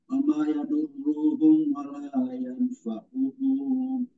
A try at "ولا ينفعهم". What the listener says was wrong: ينفعهم pendek